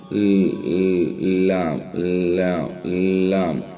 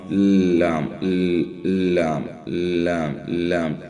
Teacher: So the tip of the tongue just stops behind the teeth, and in front there are total 8 teeth who stops this tip of the tongue.